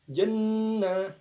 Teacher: gunnah sebab pada huruf nun terdapat gunnah, maka didengungkan 2 harokat.